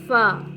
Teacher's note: सनाया उलिया के किनारे और निचले होठ के अंदरूनी हिस्से के मिलने से अदा होता है